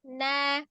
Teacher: Jadi ketika mau mengucapkan na itu ujung lidahnya menyentuh gusi atas.